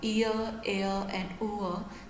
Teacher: there is movement towards this schwa sound